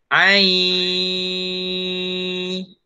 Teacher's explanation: Ustaz sebut ai. Ustaz tak sebut ain. In tu tak sebut n. N tak sebut lah. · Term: dengung